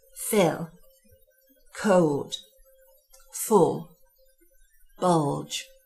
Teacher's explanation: It's what we refer to as a dark L, where the tongue tip shapes, assumes a low resonance position with the tongue tip pulled back